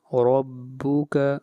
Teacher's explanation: را کو موٹا پڑھا جائے گا اور را کے اوپر فتحہ ہے